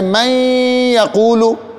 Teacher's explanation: اب دیکھیں قرآن پاک میں اس کی مثال ہے من یقولو، اصل میں تھا من یقولو، نون ساکن کے بعد یا آیا، اب نون کا یا میں ادغام ہوگا، تو جب ادغام ہوگا پھر نون نہیں پڑھا جائے گا بلکہ یا ہی پڑھی جائے گی،